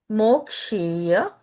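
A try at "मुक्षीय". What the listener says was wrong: Instead of Mokshiya, keep it Mukshiya. Mukshiya.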